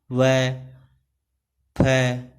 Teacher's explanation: ठीक है, सेकंड जो है दंत्योष्ठ्य। इन व्यंजनों के उच्चारण में ऊपर की दांत और नीचे के होठ का प्रयोग होता है